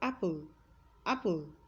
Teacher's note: because of this syllabic consonants comes immediately after the schwa sound the schwa sound becomes insignificant